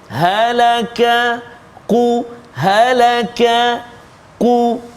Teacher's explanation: Qaf dekat mana? Pangkal lidah, kan, belakang lidah, dekat dengan anak tekak. Kaf depan dia. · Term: huruf qaf